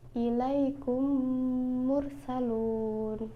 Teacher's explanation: Yang pertama adalah idgham mimi atau disebut dengan idgham misli, yaitu apabila mim sukun bertemu dengan huruf mim. Idgham mimi dibaca dengan menyuarakan mim rangkap atau mim ditasydidkan.